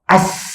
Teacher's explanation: kalau saya sebut sin, as, huruf keluar, angin pun keluar.